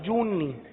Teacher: جو کو نون کے ساتھ ملا کر گنا کر کے پڑھیں گے